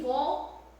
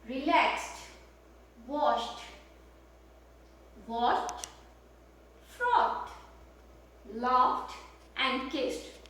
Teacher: We write it that way with ed, but we say it this way with t in the end